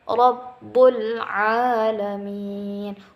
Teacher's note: Rabbul alamin, a-nya panjang 2 harokat.